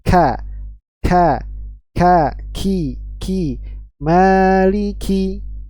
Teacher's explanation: bagian belakang lidah kita menaik ya menyentuh bagian antara langit-langit yang lunak yang lembut dengan yang keras ya Jadi tidak banyak menyentuh ke langit-langit yang lembut ya kalau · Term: huruf Kaf, huruf kaf